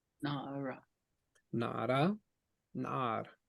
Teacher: when they say na'ar or na'ara, like that. The ah at the end goes up.